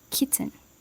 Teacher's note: The t is produced so lightly and quickly that to many ears it sounds like it is missing. And the second syllable may collapse into a syllabic n, so it feels like a 1.5 syllable word